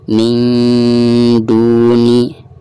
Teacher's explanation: tingkat kesamarannya itu harus lebih tinggi daripada gunahnya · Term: ikhfa akrob